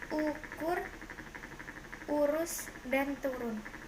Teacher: vocal belakang tinggi bawah bundar tertutup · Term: Vokal U